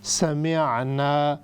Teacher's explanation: चूँकि यह आइन है, हमने इसको हमज़ा नहीं बनाना, समिअना की बजाय समिअना.